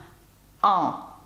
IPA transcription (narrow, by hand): ɑ̃